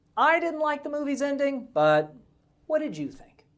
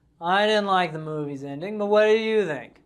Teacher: There's changing intonation signaling a question.